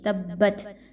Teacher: تو تا کو با کے ساتھ ملاتے ہوئے بہت مضبوطی کے ساتھ ملایا جائے گا، اور تا پر جب جزم لگا دی گئی ہے سیکنڈ والی تا کو دیکھیے تبت، تو یاد رکھیے کہ یہاں پر ہمز کی خوبی آ گئی ہے، ہمز کی صفت کو فالو کریں گے، ات کی آواز تھوڑی سی نکلے گی